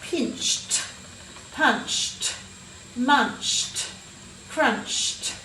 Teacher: this is a bit tricky because it sounds like it's a tee at the end